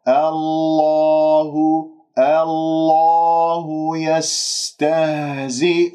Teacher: لاحظتم الهاء مضمومة نضم الشفاه والهاء مرققة من اسم الجلال